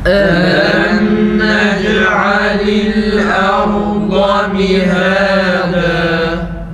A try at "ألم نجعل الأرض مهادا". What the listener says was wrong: Hemze ra'dan dolayı kalın olmasın. Arda deyip de ra tam kalın olsun.